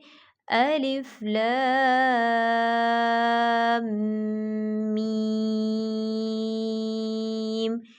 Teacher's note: یہاں پر میم شدد کا غنہ ہے، تو یہاں پر غنہ کریں گے